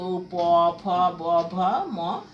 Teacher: প, ফ, ব, ভ, ম, এগুলো হচ্ছে আমাদের ঠোঁটের সাহায্যে উচ্চারিত হয় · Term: ওষ্ঠ